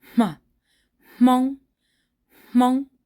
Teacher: And this is called pre-aspiration because when you're making this sound, the M sound here, you'll actually hear the aspiration first. So, ma, Hmong, Hmong.